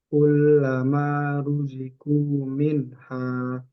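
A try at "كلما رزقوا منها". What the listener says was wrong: masih kurang tebal. Ru. Kullama ruziqu minha. Ru. Ru.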